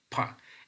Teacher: when we are producing pa, so we are using strong muscular energy. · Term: fortis